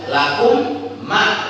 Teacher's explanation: Mim yang pertama masuk dalam huruf yang kedua. Lakum ma, mim pertama masuk dalam mim yang kedua. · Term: idgham mislaini shaghira